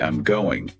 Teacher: If I say it flatly, I'm going, it's just a statement. But I'm going, with that voice going up at the end, turns it into a question.